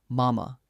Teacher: That's just the easiest sound a baby can make with its mouth, a soft m with an open vowel